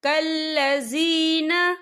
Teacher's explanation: وَلَا تَكُونُوا كَالَّذِينَ، یا دیکھیں کلذی، یہاں پہ یا مدہ ہو رہا ہے، یا ساکن ہے، یا ساکن سے پہلے زیر ہے، تو ہم اسے 2 یا 3 حرکت کے برابر کھینچیں گے۔